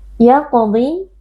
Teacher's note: huruf qaf, huruf tafkhim kita baca dengan angkat pangkal lidah